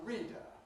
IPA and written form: ˈriːdə (reader)